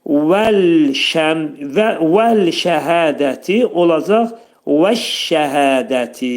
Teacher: Hə hərfinin məxrəci boğazın aşağısındadır. 2 səs qədər qaldırılır.